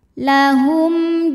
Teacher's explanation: sebab ada mim sukun menghadapi huruf selain mim dan ba yaitu huruf Jim maka mim sukun dibunyikan dengan m jelas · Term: izhar syafawi